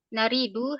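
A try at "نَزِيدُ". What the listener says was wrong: Kurang titik itu Om.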